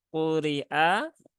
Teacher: istila ya huruf istila huruf yang EE kategorinya Huruf tebal sehingga dia dibaca dengan syarat harus menaikkan pangkal lidah